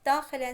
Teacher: Daxilən sözündə ən şəkilçisinə vurğu düşə bilməz